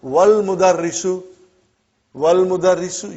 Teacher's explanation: Wal mudarrisu, you did not pronounce Hamza. Okay? Because it's Hamzatul Wasal.